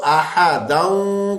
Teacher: کیونکہ تنوین کے بعد یرملون کا واو آ گیا, 4 والا ہے تو غننے کے ساتھ ملا کے پڑھتے ہیں. ہم پڑھ نہیں رہے کیونکہ ہم تو سانس یا توڑ رہے ہیں, لیکن اگر کوئی پڑھنا چاہے تو احداؤں کر کے پڑھے گا.